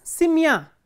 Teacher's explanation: So, if the ending is stressed, for example, simya, in simya the ending is stressed, the stress is on ya